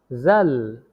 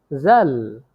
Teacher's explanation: জিহ্বার আগা সামনের উপরের দুই দাঁতের আগার সঙ্গে লাগিয়ে উচ্চারিত হয় জাল। জিহ্বার আগা সামনের উপরের দুই দাঁতের আগার সঙ্গে লাগিয়ে উচ্চারিত হয় জাল।